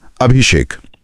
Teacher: यहां स से पहले भ में ई स्वर है तो जबान की सुविधा के लिए स का श हो जाएगा और शब्द बनेगा अभिषेक। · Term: मूर्धन्य श